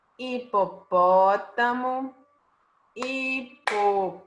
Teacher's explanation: A antepenúltima. Não é a última, não é a penúltima, a sílaba tônica é a antepenúltima. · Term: proparoxítona